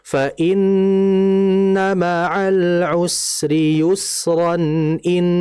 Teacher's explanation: jadinya izhar karena kan tanwin ketemu setelahnya hamzah. Tapi kalau kita wakaf berhenti maka ini disebut dengan mad iwad.